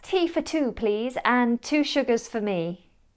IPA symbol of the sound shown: fə